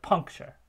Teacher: to transcribe that we would have a light final syllable because that final syllable is actually a syllabic consonant and so there's nothing in coda the nucleus is just that puncture sure sure there's no vowel · we get penultimate stress on the punk rather than on the chur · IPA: [pʰʌ́ŋk.tʃɹ̩]